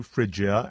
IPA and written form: ˈfrɪ.dʒi.ə (Phrygia)